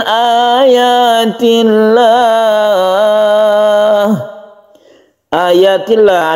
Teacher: ada lafaz Allah sebelumnya kasr disebut dengan lafzul jalalah yang dibaca tarqik atau muraqa tipis